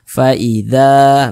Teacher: baca fathah atau harakat fathah sehingga huruf sebelumnya itu dibaca panjang Mad thii panjangnya dua harakat